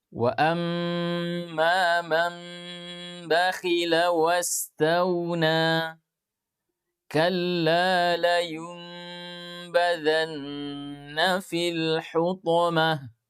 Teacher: Apa yang dirubah yaitu suara nun sukun dan tanwin dirubah menjadi suara mim. Berarti kalau suara mim maka dirapatkan bibir disertai dengan dengung. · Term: iklab